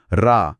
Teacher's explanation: जेव्हा आपण उच्चारतो तेव्हा जिभेचा शेंडा टाळूला स्पर्श करतो हा अग्नी आणि शक्तीला जागृत करणारा ध्वनी आहे >> ओके >>